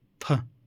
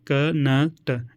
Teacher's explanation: फ में महाप्राण निकल रहा है, ज़्यादा प्राणवायु निकल रही है